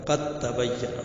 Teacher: جس حرف پر جزم ہو اور اس کے بعد والے حرف پر تشدید ہو تو اس جگہ پہلا حرف پڑھانا جائے گا، جیسے قد تبین، تو دال کو، جو دال ساکن ہے اس کو کمپلیٹلی غائب کر دیں گے اور قا کو تا میں ملائیں گے